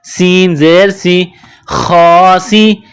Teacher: سین میں سیٹی کی آواز پیدا کرنی ہے